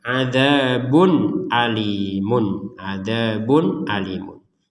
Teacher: tanwin bertemu hamzah juga dibaca dengan jelas